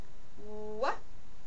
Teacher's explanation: الواه صوت خلفي و خلاص. وايه اللي بيرتفع بقى؟ مش طرف اللسان، مش بيرتفع طرف اللسان، ظهر اللسان على ورا